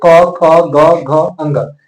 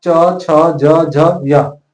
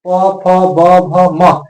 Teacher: इसका उच्चारण में कंठ, तालु, मूर्धा, ओष्ठ तथा दांतों का पूर्ण स्पर्श होता है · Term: स्पर्श व्यंजन